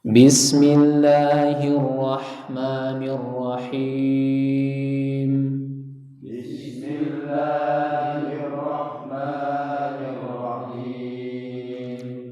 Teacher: Perhatikan kalau membaca lafaz Allah, lam jalalah di situ tidaklah panjang ya. Jadi maksudnya tidak melebihi dari kadar 2 harokat.